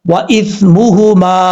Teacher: سا میں سیٹی نہیں آنی چاہیے